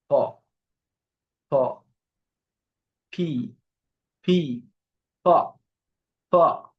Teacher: প্রথম যেটা আছে পি, এটা প সাউন্ড করে। এই প সাউন্ডটা হবে হচ্ছে দুই ঠোঁট একদম বন্ধ করে